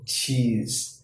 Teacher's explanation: Is a blend combined of ta and sha. It starts out as a ta stop, and then the tongue moves into the position for sha, like cheese. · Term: affricate sounds